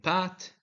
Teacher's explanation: p in Pat is made by closing the lips and releasing them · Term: bilabial sounds